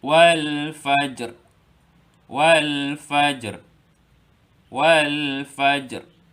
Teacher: Disebabkan kita hendak waqaf, ra ni huruf terakhir kita kena matikan.